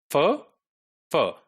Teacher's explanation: This is labiodental, fur, right? The lower lip and upper teeth.